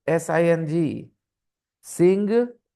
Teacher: Whenever you have ing at the end or ng at the end, only ng, then g is silent.